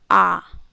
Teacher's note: विवृत स्वर में क्या होगा, मुंह हमारा ज़्यादा खुलेगा, यानी अंदर से आवाज़ निकल के आएगी, तो वो बोलने के आधार पे।